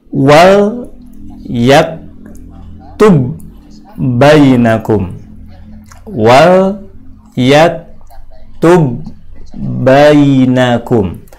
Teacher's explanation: Apabila terjadi pertemuan antara ba mati dengan ba hidup, maka cara membacanya harus digabungkan kedua huruf ba tersebut, dan yang nampak adalah ba yang kedua dengan bunyi tasdid. Maka di mushaf setiap terjadi bacaan idgham itu ditandai dengan tasdid.